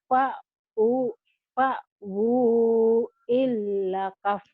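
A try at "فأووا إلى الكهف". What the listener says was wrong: Bukan. Nggak ada tasjidnya Bu. Fa'wu ilal kahf. Fa'wu ilal kahf.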